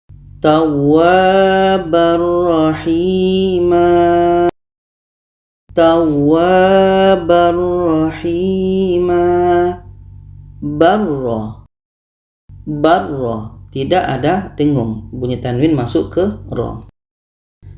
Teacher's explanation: ayat 64 ini di sini ada tanwin bertemu huruf idghom bilagunnah tanwin kita masukkan ke roh dan tidak ada dengung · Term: idgham bilagunnah, idgham bila gunnah